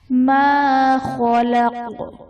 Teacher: ما خلق، خا حرف مستعلیہ پر پڑھا جائے گا، اور قاف حرف قلقلہ وقف کی صورت میں ساکن ہو جائے گا، تو یہاں پر ہم نے قلقلہ خوب ظاہر کرنا ہے